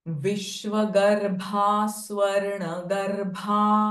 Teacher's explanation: भ sound here is महाप्राण sound